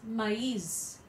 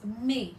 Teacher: it's A and I pronounced separately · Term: trema